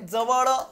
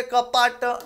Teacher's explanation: मराठी शब्दातील अंत्य अंत्य म्हणजे शेवटचा वर्ण अ हा निवृत्त म्हणजे अर्धवट किंवा अपूर्ण उच्चारला जातो